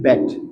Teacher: Front of the tongue is raised up to between half closed and half open line, between half closed and half open line, closer to the half closed line.